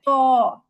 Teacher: কি করতে হয়, মুখ গোল করে বলতে হয় ত। ত, মুখটাকে গোল করে মোটা করে বলতে হয় ত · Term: পুর